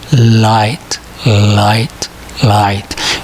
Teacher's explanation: We begin pronouncing both sounds the same way, but we end each differently using the movement of the tongue. Now, in the light L, we finish the sound by releasing the air by bringing the tongue down